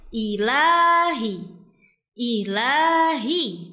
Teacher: Di sini terdapat huruf lam yang dibaca panjang dua harakat.